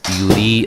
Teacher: را کو باریک پڑھیں گے، یا مدہ ہے، وقفاً بڑی مد کے ساتھ پڑھ سکتے ہیں۔